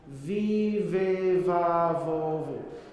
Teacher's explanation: It's the same exact consonant as F. It's the lower lip, upper teeth.